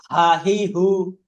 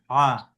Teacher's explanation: এ হাটা গলা থেকে মানে জোরে করে হলকুম থেকে আওয়াজটা দিতে হবে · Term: বড় হা